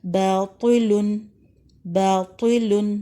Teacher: تو کے نیچے زیر ہے، اس کو تب بھی بلند ہی پڑھیں گے · الف سے پہلے زبر ہے، مد اصلی ہے با میں، اور 2 حرکات تک آپ لمبا کریں گے